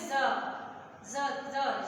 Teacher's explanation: जीभ को दांतों से टच करके बोलते हैं। जब ज हम बोलते हैं तो जीभ हमारी दांतों से टच होती है और हवा जो है वो साइड से निकलती है, ठीक है, ऐसे बोलते हैं इसका उच्चारण।